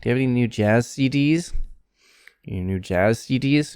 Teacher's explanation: you have any new jazz cds your new jazz cds and probably jazz might be more stressed